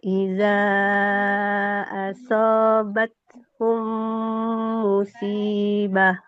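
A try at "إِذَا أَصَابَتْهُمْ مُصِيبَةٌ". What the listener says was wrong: Oke, sudah bagus panjang pendeknya, tapi huruf shadnya belum dapat tebalnya. Alladzina iza nah, asobat hum musibah. Kalau musibah tipis nanti jadi sin.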